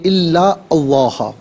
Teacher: اسے اس میں اللہ کی حرف لام کے ساتھ ملائیں گے، درمیان میں سے الف یعنی حمزہ کو حذف کیا جائے گا، اور اس میں اللہ کی حرف لام کو یہاں پر کر کے پڑھیں گے کہ ما قبل لام پر زبر ہے۔ · ان میں نون ساکن ہے، اسے لا کے لام کے ساتھ ملائیں گے، اور نون کی آواز نہیں بلکہ لام کی آواز ہوگی۔ یہاں پر یرملون کا جو قاعدہ ہے وہ اپلائی کیا جائے گا۔